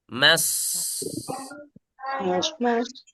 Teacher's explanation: Mas, ini huruf shad, harus tebal. Mas. Nah, ini huruf fa, baru dia huruf fa ini ada di perut bibir.